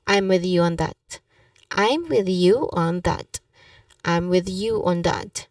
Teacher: With you should be linked naturally. It sound like a one word.